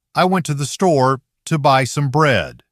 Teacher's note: Store and bread carry the stress, and the other parts move more quickly and lightly. The time between the stressed beat stays relatively even.